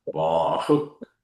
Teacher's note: So you pronounce the Visarga as a K.